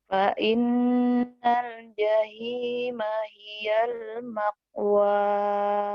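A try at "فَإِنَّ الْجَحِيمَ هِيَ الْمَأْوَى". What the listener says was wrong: Bukan makwa. Jangan keka ya. Tapi jangan makha.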